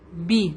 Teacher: زیر کو کبھی بھی اے نہیں کہیں گے, ای کہتے ہیں